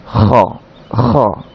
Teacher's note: তাহলে এই খটা একেবারে হলকের শুরু থেকে